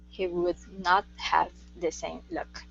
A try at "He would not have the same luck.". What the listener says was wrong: Would. Open your mouth a little bit more for the sound. He would not have the same luck.